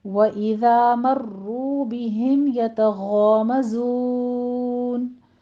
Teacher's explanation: मर्रू में रा मुफ़ख़म है, यहाँ पे तशदीद भी है, सख्ती कीजिए और रा को मुफ़ख़म पढ़ते हुए आगे वाव मद्दा है, दोनों होठों को गोल कर लेना है, 2 काउंट करना है